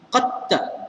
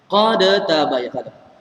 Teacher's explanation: Masuk semua sekali maknanya dal tidak dibaca langsung. Qatta. Kita tak akan baca qad tabayyana. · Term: idgham kamil